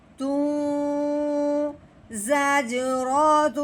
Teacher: اس تنوین والے حرف کو واؤ مشدد کے ساتھ ملا دینا ہے اور ایک الف کے برابر لمبا گھننا بھی کرنا ہے